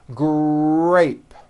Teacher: notice in the word grape, the R sound is stronger and you even hear it more than the G sound. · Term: R blends